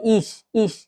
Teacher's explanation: আমি, ইস অর্থ আমি। তাহলে টিপস কি ই বা আয়ের পরে নরম তালিবাস স, হ্যাঁ, গলা নয় মুখের সামনের দিক থেকে বের হবে